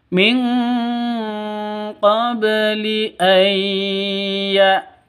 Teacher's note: Terus ba mati qalqalah sugro. Ba mati itu hurufnya qalqalah, ada di tengah qalqalah sugro, dipantulkan ke hurufnya.